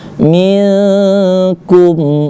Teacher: Nah, dapat lagi kita bahwasanya ikhfa itu hurufnya lain daripada huruf tha, sya, dan huruf ta tadi, huruf kaf. Nah, huruf kaf termasuk huruf ikhfa, maka dibaca dengung.